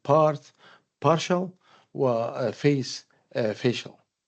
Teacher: So t becomes the paral is a kind of process of paralization face facial. So T becomes SH and S becomes SH and this actually change is triggered by the addition of the suffix